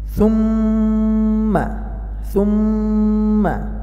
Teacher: মিমে তাসদিদ গুন্না করতে হবে।